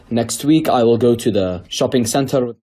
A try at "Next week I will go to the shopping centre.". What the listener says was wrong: Next week I will go to the shopping centre. Don't pronounce the R. Shopping centre. Water. Better. We don't pronounce the R's at the end of the word.